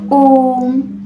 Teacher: ये ह्रस्व स्वर के मुकाबले में 3 गुना समय लेता है। ह्रस्व स्वर के मुकाबले में, ठीक है, 3 गुना समय लेता है। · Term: प्लुत स्वर